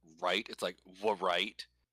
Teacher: we say every r word in the beginning as if there was a w on the front of it · I think our R is like pre-labialized. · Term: American R